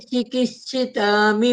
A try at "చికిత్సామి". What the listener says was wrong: చికిత్సిత కాదు, చికిత్స అంతే. చికిత్సిత అని చెప్తా ఉండరు, చికిత్స అని చెప్పాల. ఎక్స్ట్రా వర్డ్ ఒకటి లెటర్ వేస్తా ఉన్నారు. చికిత్సిత కాదు నిర్మల అంటే చికిత్స.